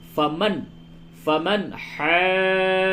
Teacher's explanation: فمن حاجک، حاجک، جیم مشدد ہے اور یہاں پہ مد لازم ہوگا، اور نون ساکن کے بعد ہا حروف حلقی ہے، اس لیے اس جگہ پہ اظہار ہوگا، یعنی نون ساکن کی آواز کو بالکل ظاہر کر کے پڑھیں گے